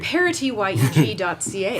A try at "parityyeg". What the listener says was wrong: Pronounce that T. Make sure you pronounce that T.